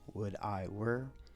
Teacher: It's got a nice rise and fall because you've got two relatively lower vowels, would I were, and it's long, short, long.